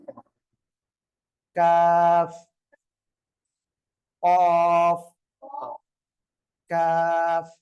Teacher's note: நாவின் கடைசியிலிருந்தும் உள்வாயின் மேல் பகுதியிலிருந்தும் வெளியாகக்கூடிய எழுத்து